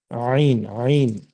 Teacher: हलक का जो बीच का दरमियानी सेंटर हिस्सा है, वहां से आइन और हा निकलेगी आवाज उसकी।